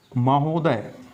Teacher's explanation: इन दोनों आ और उ के मिलने से ओ हो जाएगा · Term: स्वर संधि